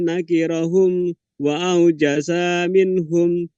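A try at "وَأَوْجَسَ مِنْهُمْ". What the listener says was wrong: Wa aujasa minhum. Sanya pendek.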